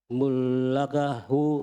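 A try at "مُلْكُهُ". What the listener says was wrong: Mul sukun. Mulkuhu.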